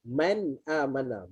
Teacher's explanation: Kalau bunyi nun jelas, man amana, maka nama dia izhar.